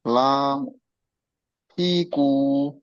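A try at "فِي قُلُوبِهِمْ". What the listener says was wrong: কু টানাবে না, ফিটা টানাবে, ফিকু। হচ্ছে না, বুঝতে পারছেন, ফিটা টানাবে, ফিকুলু।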